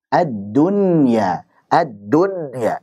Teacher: dunya itu akan kesulitan untuk keluar karena memiliki gunnah